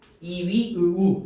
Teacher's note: 입을 조금 벌리고 혀의 위치가 높여서 발음되는 거야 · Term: 고모음